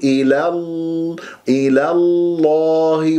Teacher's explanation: تفخم اللام من اسم الجلال الله